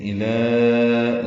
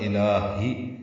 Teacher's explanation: اب لام کو 2 حرکات لمبا کر سکتے ہیں کیونکہ آگے ہا آ گیا، تو یہاں میں مد منفصل نہیں بنتی۔ الہی، الہ میں لام کو 4 حرکات لمبا کیے، مد منفصل، اور الہی میں لام کو 2 حرکات لمبا کیے